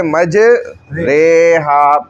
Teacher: امالہ کہتے ہیں کہ مائل کرنا، قطرے، ٹھیک ہے، مجرے، تو مجری، ری سے رے کی طرف ہو گیا